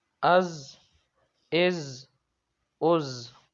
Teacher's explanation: حمزہ زا زبر از، اس میں سیٹی کی آواز دیں گے کیونکہ حروف صفیریہ یہ سیٹی والے حروف ہیں